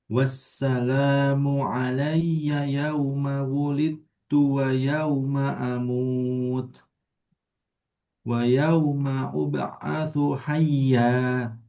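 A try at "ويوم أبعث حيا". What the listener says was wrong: Wayau, nah itu ketekan. Nanti ya sukun sama wau sukun sebelumnya fathah itu sama, lembut, lin. Jadi lin itu punya dua huruf. Wau sukun sama ya sukun sebelumnya fathah. Wayau, jangan ditekan wayau ma, tapi wayau ma uba'atsu hayya.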